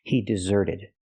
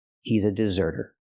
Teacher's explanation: I change the verb desert to the past I hear deserted the T changes to a fast D because it's between vowels